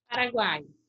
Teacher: eu tenho uma semivogal que é uh depois a vogal e outra semivogal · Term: tritongo